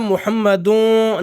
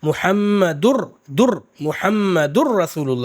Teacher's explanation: اور جب را میں ملائیں گے تو تنوین میں نون کی آواز نہیں آئے گی، سیدھے را کی آواز آئے گی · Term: ادغام